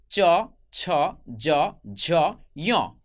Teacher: এই 5টি বর্ণের উচ্চারণের স্থান একই, তালু। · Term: তালব্য ধ্বনি